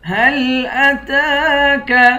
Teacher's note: تا پر کھڑا زبر ہے، اس کو ایک الف کی مقدار کھینچ کر پڑھیں گے۔